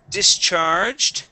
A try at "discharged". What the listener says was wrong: Instead of discharge, using an E sound, D, it is D, short I, discharged.